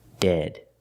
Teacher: use the short e sound the sound e like head and bed